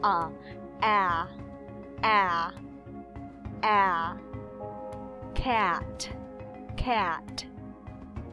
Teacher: ah as in cat always remember that when you pronounce the short a sound it's like you are going to pronounce e and then you change your mind